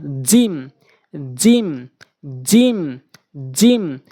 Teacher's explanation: জিমটা উচ্চারণ করার ক্ষেত্রে জিহ্বার মাঝখান জিহ্বার মাঝখানটা বরাবর উপরে তালু রয়েছে সেই তালুর সঙ্গে লাগাবেন জিম এরকম শক্তি দিয়ে সাউন্ড করে উচ্চারণ করবেন জিম জিম জিম